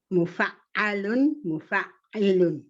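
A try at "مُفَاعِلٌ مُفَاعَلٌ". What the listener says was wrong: The E comes before the A. Mufa'ilun, mufa'alun.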